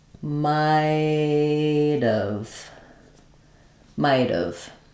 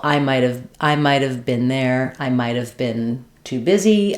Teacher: Because we have the T at the end, when we drop that H and we go to the vowel sound, might have, of, this A vowel becomes more of a schwa. And so my T linking to the schwa becomes a flap.